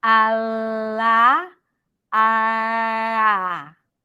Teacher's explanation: It's like you're pretending to pronounce an L, but you're not bringing the tip of the tongue to touch the upper palate.